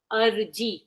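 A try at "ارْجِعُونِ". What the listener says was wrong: پیش کا اور زیر کا فرق ہوتا ہے.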